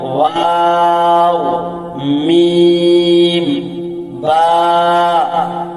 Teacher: দুই ঠোঁট মিলাইয়া উচ্চারিত হয় ওয়াও, মিম, বা।